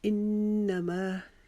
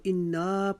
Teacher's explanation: نون مشدد کے لیے ہم ایک الف کے مقدار نون پر رکیں گے، تو اس کو انا نہیں پڑھیں گے۔